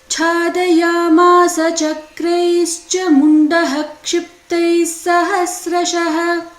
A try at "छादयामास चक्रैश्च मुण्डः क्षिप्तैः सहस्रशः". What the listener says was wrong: Mundaha, you have to take a pause. शरवर्षैर्महाभीमैर्भीमाक्षेन्तां महासुरः छादयामास चक्रैश्च मुण्डः क्षिप्तैः सहस्रशः